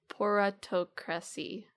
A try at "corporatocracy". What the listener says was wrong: Well, the pronunciation was probably fine. The emphasis, interesting.